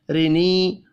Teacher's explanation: رینی را کو زیر کی وجہ سے باریک پڑھیں گے، یا مدہ کو ایک الف کے برابر کھینچ کر پڑھنا ہے۔